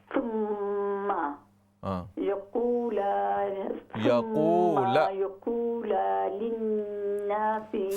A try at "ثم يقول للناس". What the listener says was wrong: یقول کے لام کے زبر کو آپ بہت لمبا کر رہے ہیں.